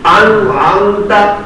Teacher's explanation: اظہار کے معنی میں ظاہر کرنا. اس میں نون ظاہر کی جائے گی, غنہ نہیں ہوگا بلکہ نون ظاہر کی جائے گی